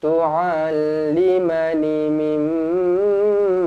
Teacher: mim sabdu wajibul gunnah, dengungkan 2 harokat